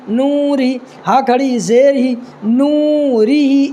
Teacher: یہ را کو باریک پڑھنا ہے اس لیے کہ را کے نیچے زیر ہے